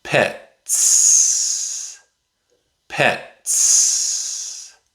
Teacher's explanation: In this word, the letter T comes before the letter S. The T makes the T sound. That's a voiceless sound. So the S is voiceless too.